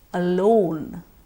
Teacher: alone that would consist off a schwa sound again followed by loan